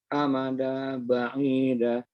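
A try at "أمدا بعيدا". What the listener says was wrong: Amadam, ditahan karena kolab ya.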